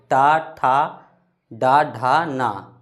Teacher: ट का उच्चारण स्थान मूर्धा।